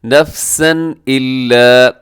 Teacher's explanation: نفسن الا، یہاں نفسن پہ تنوین کے بعد حمزہ ہے تو یہاں اظہار ہوگا۔ نفسن الا، اظہار کا مطلب ہوتا ہے غنہ نہیں کرتے۔